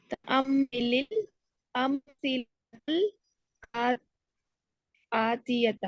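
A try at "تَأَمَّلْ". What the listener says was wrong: इसको तअम्मा पढ़ेंगी ना फिर ही सही करके पढ़ा जाएगा। तअम्मा, इसको जेर ना दें, तअम्मे ना पढ़ें इसको, फिर नहीं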